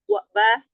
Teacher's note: banya dua bibir yang dirapatkan